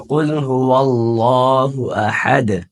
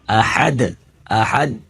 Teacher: کلکلا کا مطلب ہے دال کی آواز فل نکال کے پڑھیں گے، احد احد ایسے نہیں پڑھیں گے۔